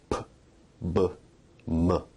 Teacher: Bilabial sounds are produced with both lips, like p, b, m.